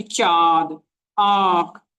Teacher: अनुनासिक वह स्वर होता है जिसका उच्चारण मुख और नाक दोनों से किया जाता है, जैसे कि चांद, आंख आदि।